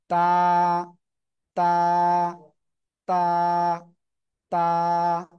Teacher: জিহ্বার আগা, এই যে বড় বড় দুটো দাঁত, এর গোড়ায় লাগাবো, লাগিয়ে সিম্পল উচ্চারণ করব এক আলিফটা নিয়ে।